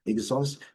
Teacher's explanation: Aqui uma pequena diferença entre os sons nessa sílaba mais forte, aqui a sílaba forte, a segunda, exhaust, no inglês britânico um pouquinho mais fechado, no inglês americano um pouquinho mais aberto.